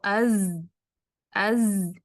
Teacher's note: اس میں رخاوہ ہے، اس میں ہمس نہیں، اس میں رخاوہ ہے. مینس آواز تھوڑی دیر جاری رہے گی جب اس کو سکون سے پڑھیں گے. اور یہ جو بزنگ کوالٹی ہے جو اس کی صفت ہے، وہ دیکھیں کہ یہ والا حصہ زبان کا اس کے قریب جائے گا تو یہیں سے پیدا ہوگی.